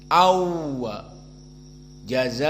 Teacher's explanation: tidak dibaca dengan gunnah, hanya idgham. Berarti tanwinnya tetap masuk kepada waw. Awwa jazaa, namun tidak ada gunnah, sehingga pertama tidak 2 harokat, kedua makhrajnya dari syafatain, wawiwu au, bukan dari hidung seperti pembacaan jumhur jazaa'an wala awwala harokatan dan pindah kepada hidung. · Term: idgham bila gunnah